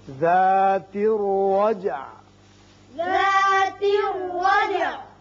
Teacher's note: جیم ساکن ہے اس کی صفت قلقلہ ادا کریں گے